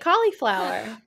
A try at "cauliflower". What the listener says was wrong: The I is doing a lot of work there. The I is doing a lot of work.